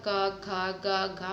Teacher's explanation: कंठ से इसका उच्चारण होता है घा का